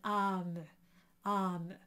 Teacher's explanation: We have the little accent or an accent circonflexe in French. That does not change the color of the A. It is an A sound, une âme, âme.